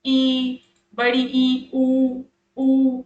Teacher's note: संवृत को समझेंगे। इसमें मुंह लगभग आपका बंद रहेगा